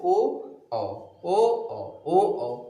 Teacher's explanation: ओ ओ कहाँ से मूवमेंट हो रहा है, एक तो गले से, दूसरा होठों से, गले से और होठों से। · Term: कंठ और ओष्ठ